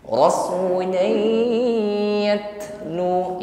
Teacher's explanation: yat tak sukun, jangan ditahan tapi hembuskan nafas. Di situ ada sifat hamsnya yat.